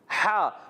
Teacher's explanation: ہا کا مخرج ہے حلق کا درمیان والا حصہ